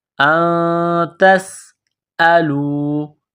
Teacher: سین میں سیٹی کی آواز پیدا کرنی ہے